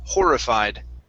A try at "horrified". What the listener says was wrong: Okay, so here you're still saying hur, instead of horrified, it go right to an O. Instead of an oo sound, it's horrified.